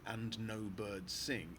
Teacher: the last four syllables in this stanza are all stressed